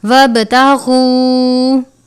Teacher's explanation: با پر کلکلا کرتے ہیں کیونکہ با ان 5 حروف میں سے ہے جن پر کلکلا کرتے ہیں